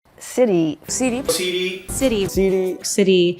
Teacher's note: Vamos a llamar a este sonido el golpe alveolar, porque es un golpe rápido que la lengua da a la zona alveolar. La zona alveolar es el borde duro que está justo detrás de los dientes.